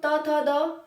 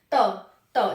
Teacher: जब हम त थ द इस त वर्ग को बोलते हैं तो दांत हमारे टच होते हैं त त जीव दांतों को टच करती है त थ द